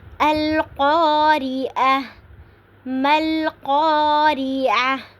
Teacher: القاریۃ، اب القاریۃ ہے تو قا پہ الف مدہ ہو رہا ہے، اور جب قاریۃ پہ وقف کریں گے تو تا کو ہم جو ہے اسکپ کر دیں گے اور ہا کو پڑھیں گے وقف کی صورت میں